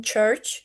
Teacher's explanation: The voiceless affricate begins as t and ends in sh, as in church, and the voiced affricate begins as d and ends in j, as in judge.